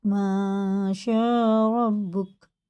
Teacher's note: شین میں مد متصل ہے تو یہ چار پانچ الف کے اور کھینچ کے پڑھیں گے